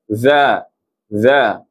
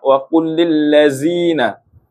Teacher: Lidah bersentuhan dengan hujung gigi atas. Za za. Jadi mesti kena keluarkan lidah. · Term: huruf zal